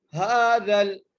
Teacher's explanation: ہا کو کھینچ کے پڑھنا ہے الف کی مقدار ، ہاذل، زال کو لام سے ملانا ہے، ہاذل، ٹھیک ہے،